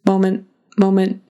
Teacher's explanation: it sounds like the t is completely gone